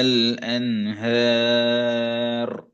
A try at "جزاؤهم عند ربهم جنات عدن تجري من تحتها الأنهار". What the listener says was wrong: அந்த எர் பின்னுக்கு போறது போதாது. எர் அன்ஹர்.